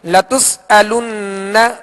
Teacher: نون مشدد ہے، اس پر تشدید ہے، اس پہ غنہ کریں گے